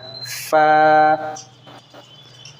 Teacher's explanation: उसके बाद फ़ा, हरफ शफ़विया, फ़ा, जो दांत होते हैं ऊपर के, अपर टीथ, और नीचे का जो होंठ होता है उससे टच होते हैं तब निकलता है